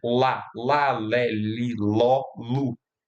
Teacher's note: Então, L, quando eu falo L, a língua está no meio da boca, obstruindo essa parte do meio, e o ar está saindo ao longo dessa obstrução por um dos lados ou pelos dois lados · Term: consoantes laterais